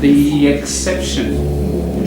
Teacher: when you've got a vowel and a vowel, there's a linkage. And 90% of the time, it's a y sound.